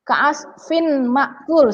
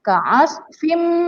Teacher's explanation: tanwin atau dalam hal ini kasrotain itu ya, tidak dibaca lagi innya, tetapi melebur ke dalam huruf selanjutnya. Yang mana huruf selanjutnya ini adalah huruf mim. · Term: idgham bigunnah